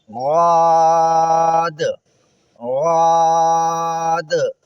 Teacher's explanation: غاد کا میں ایک بار دوبارہ مخرج بھی آپ کو بتا دوں۔ زبان کے کنارے کا دایاں یا بایاں کنارہ کروٹ، اس کو آپ دائیں طرف یا بائیں طرف کے اوپر کے مسوڑے سے ملائیں گے تو زاد ادا ہوگا